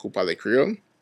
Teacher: you could very well pose the same question without the use of SK, with just a rising intonation